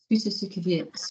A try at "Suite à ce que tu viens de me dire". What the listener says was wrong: No, you're trying to say it with the vibration being in the same place, down all the way through. The vibration is going to have to move. Mouth is going to stay still. Vibration is going to move.